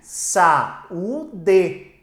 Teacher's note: Você tem aqui uma palavra que tem, ó, a penúltima sílaba tônica. Se ela tem a penúltima sílaba tônica, ela é paroxítona.